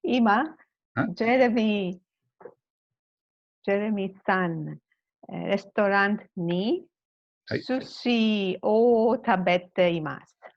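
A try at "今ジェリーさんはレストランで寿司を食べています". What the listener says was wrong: Perfect.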